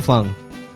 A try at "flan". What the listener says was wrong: Are you putting a G on the end of that? Flang? No, flan, not flang.